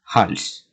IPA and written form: hals (hals)